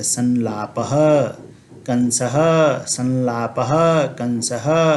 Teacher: लकार अथवा दंत्य सकार के रहने पर हम इसका उच्चारण न के समान करते, संलापः, कंसः, संलापः, कंसः। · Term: अनुस्वार का उच्चारण